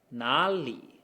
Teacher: We have a rise and a dip within one word. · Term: last tone rule